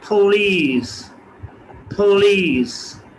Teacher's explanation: क्योंकि पी शुरू में, प की आवाज़ शुरू में आई है, वर्ड के शुरू में आई है, इसलिए प को हम फ बोलेंगे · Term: एस्पिरेशन इन द बिगिनिंग